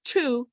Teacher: So we have two with the puff of air.